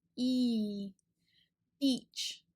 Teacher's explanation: it's a very high and front sound and our shape is kind of wide with our lips and our cheeks